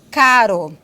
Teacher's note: Então, eu vou ter o Rá, esse aqui é o som do Rá, aqui como em caro, né? Consoante TEP alveolar, como em caro.